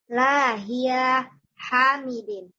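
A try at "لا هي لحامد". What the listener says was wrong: Linya ketinggalan. La hiya li hamidin.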